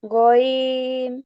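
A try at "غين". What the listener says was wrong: আচ্ছা আপু, গয়নের উচ্চারণটা আরেকটু গলা থেকে আসবে। গ, গইন। আমরা যদি গ বলি, গটা উচ্চারণ শক্ত, তো গইনটা একটু নরম হয়। গইন।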